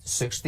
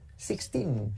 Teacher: acentuar la primera parte del número